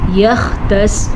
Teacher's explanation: خا کو پر پڑھ لیجیے گا اور سواد کو بھی پر پڑھ لیجیے گا